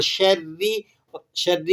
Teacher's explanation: یہاں پر بھی نون کے اوپر کیا ہو رہا ہے، اخفا ہو رہا ہے، اور شرری، شرری کی را باریک پڑھی جا رہی ہے، اس لیے کہ را کے نیچے زیر ہے